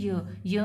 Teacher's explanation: टंग जो है वो हार्ड पैलेट की तरफ रेज होती है बट इतना क्लोज नहीं होती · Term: पैलेटल